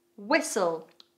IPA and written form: wɪsəl (Whistle)